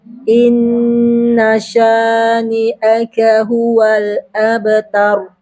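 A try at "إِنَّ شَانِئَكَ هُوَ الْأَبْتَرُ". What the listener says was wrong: Baik.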